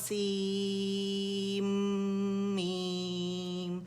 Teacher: سین کا نون غائب ہو گیا کیونکہ وہ کمپلیٹلی جا کے میم کے اندر مرج ہو گیا. تو اب ہم میم کی آواز نکالیں گے. · ہم ایسے نہیں کہیں گے کہ تو سین اور پھر میم پڑھیں گے, بلکہ ہم پڑھیں گے تو سین میم. نون کی آواز نہیں مطلب بولی جائے گی. ٹھیک ہے, وہ غنے سمیت میم میں چلے گئے.